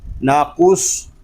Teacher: صاد میں سیٹی کی آواز بھی آئے گی